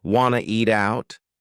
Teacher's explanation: We've dropped the question word completely to just yeah, and then we have reduced want to become wanna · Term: reduction